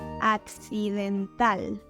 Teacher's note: In Spanish, the stressed syllable is in the last position, and you need to emphasize the letter A.